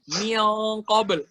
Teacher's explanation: lidah kita tuh diangkat di bagian qaf. Mil. Udah siap-siap untuk huruf setelahnya.